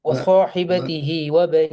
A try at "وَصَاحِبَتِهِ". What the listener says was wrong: அப்படியே வருது இல்ல. ஃப்ளோல வருது இல்ல. வ வ வ இந்த பிரேக் போடுற மாதிரி. فصاحبته وصاحبته எது சரி?